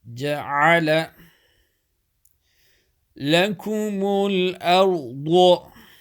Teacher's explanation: ayn middle of throat